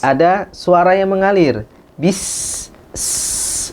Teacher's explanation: sifat hamas dan juga rakhawah pada sin. Dia harus dialirkan udara. Bis ya. Kita tempelkan tangan di kita untuk mengetahui ini ada udara nggak sih yang ngalir.